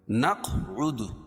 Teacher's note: قاف پر قلقلہ، کیوں؟ یہ حروف قلقلہ کے 5 حرفوں میں سے ہے اور ان پر جزم ہے۔ جب ان پر جزم ہو تو وہاں قلقلہ ہوتا ہے۔